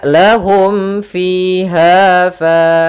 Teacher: panjangnya fiha fa itu harus sama sepanjang dua harakat. Maka lahum fiha fa tidak boleh dibedakan antara panjang yang satu dan panjang yang lainnya. · Kemudian yang ketiga, karena ketiga yaitu huruf fa, adanya alif setelah huruf fa, maka dinamakan dengan mad tabi'i. Sehingga panjangnya fiha fa itu harus sama sepanjang 2 harokat. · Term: mad thabi'i